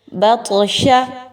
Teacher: اب یہ وہ لیٹرز میں سے ہے، ان میں سے ہے، ان حروف میں سے ہے طا کہ جو کہ حروف قلقلہ کے لیٹرز ہیں۔ آپ نے یہاں پہ طا کو ہلا کے پڑھنا ہے، اس پر سکون کا نشان ہے۔